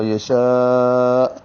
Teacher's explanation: الف مدہ ہوگا اور اس کے بعد حمزہ اسی کلمے میں ہے، اس لیے مد متصل ہوگی۔ اب اس کو 4 حرکات سے زیادہ لمبا کریں گے۔